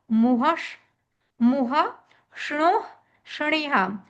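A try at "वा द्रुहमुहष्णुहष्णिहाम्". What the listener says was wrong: चारों धातुओं जब बोलनी है ना तो हा को एकदम स्पष्ट बोलना है। वा द्रुह मोह श्णोह श्निहाम। हा चारों में स्पष्ट हो।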